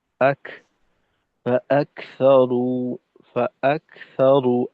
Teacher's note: আওয়াজটা পরিপূর্ণ আটকাবে না কাফে। আক, ফাআকসারু, ফাআকসারু আওয়াজটা রানিং থাকবে।